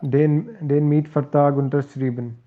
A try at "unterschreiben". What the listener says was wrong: Unterschreiben. Put the stress on the second one here. Yeah, on this one.